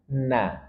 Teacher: huruf nun ujung lidah dengan gusi dua gigi seri atas Na dan dia tarkik tipis bukan na dalam bahasa kita kan